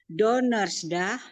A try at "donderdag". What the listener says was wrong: Donder, donderdag bukan donders, donderdag,